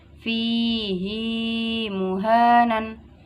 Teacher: Lafadz fihi, ha dibaca panjang satu alif.